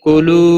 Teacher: واو مدہ ہے، ایک الف کے برابر کھینچ کر پڑھیں گے